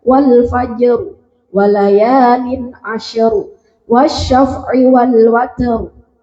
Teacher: Seperti dalam surat Al-Fajr juga, wal fajr walayalin asyru wasyaf'i wal watr. Itu roknya dibaca tebal semua. Ya, jadi itu bisa diingat, ro yang dibaca tebal itu identik dengan harokat fathah atau dhammah. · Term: tafkhim